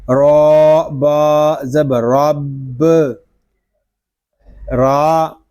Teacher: اس کو ہم پر پڑھیں گے کیونکہ را کے اوپر زبر آ گیا ہے۔ آگے با مشدد ہے، اس کو ہم جماؤ کے ساتھ ادا کریں گے۔